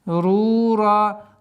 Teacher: Син со свойством свист, и поэтому договариваем. Масрура. Долгота в размере двух огласовок дамму удлиняем.